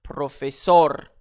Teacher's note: Ce n'est pas un S. Alors, j'accentue sur la dernière syllabe.